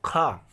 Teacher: स्पर्श व्यंजन कंठ्य ध्वनि, अघोष और महाप्राण ध्वनि है